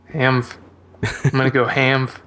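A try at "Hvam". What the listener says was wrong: Well, it's not Hamv, because the V is before the...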